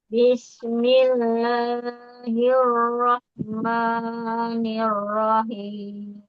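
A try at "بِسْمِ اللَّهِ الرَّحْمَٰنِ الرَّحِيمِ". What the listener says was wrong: Karena kehabisan napas, jadi kurang konsisten ya untuk mad di sukunnya. Bismillahirrahmanirrahim.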